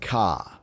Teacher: in non-rhotic accents, which you find in many British or Australian dialects, the R gets dropped. So instead of saying car, it might come out more like ka.